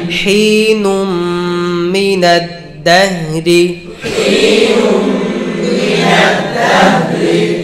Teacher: হা হামস রখওয়া ইস্তিফাল ইনফিতাহ ইসমাত।